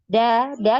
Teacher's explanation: Jadi untuk huruf Dal ini Dia tidak punya aliran nafas ya tertahan aliran nafasnya dan juga tidak punya aliran suara jadi tertahan aliran suaranya ya Sehingga dari kedua sifat yang tadi